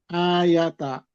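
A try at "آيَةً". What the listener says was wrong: Ayatan, langsung ditanwinkan. Ayatan.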